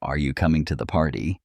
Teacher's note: For example, in a question like are you coming to the party? The voice rises toward the end. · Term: intonation